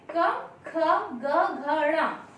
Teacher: इनका उच्चारण स्थान है कंठ। अर्थात जब ये वर्ण हम बोलते हैं तो हमारी वायु जो कंठ से निकलती है, कंठ को स्पर्श करते हुए बाहर आती है